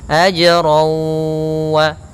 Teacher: Yaitu tanwin kepada huruf waw. Bi gunnah artinya dengan gunnah, ditahan. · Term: idgham bi gunnah